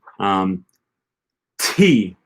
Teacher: At the beginning of a word, the T, there's a little puff of air that comes out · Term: aspiration